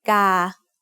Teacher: Gà also has a middle-class consonant with a long vowel, so that's mid-tone.